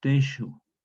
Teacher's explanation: la yo también palataliza la S y la transforma en la J antigua, una fricativa palatal sorda